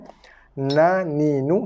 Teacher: Hujung lidah bukan sentuh belakang gigi. Sentuh langit depan. Ataupun gusi atas.